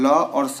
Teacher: तो जो आपका ल और स होता है उसका उच्चारण स्थान आपका दंत होता है।